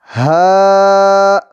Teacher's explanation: حلق کے آخر سے جو سینے کی طرف ہے وہاں سے ہا ادا ہوتا ہے